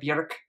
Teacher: in Iceland, it would be pronounced more like Björk with the rolled R